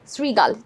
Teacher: দেখো শৃগালে এখানে একটা রিকার আছে, এই জন্য রফলায় রশি আমাদের উচ্চারণটা হবে এবং শৃগালে তালব্য ষটা দন্ত স এর মতো উচ্চারণ হয়